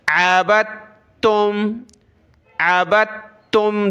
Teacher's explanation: دال کو بالکل بھی نہ پڑھیں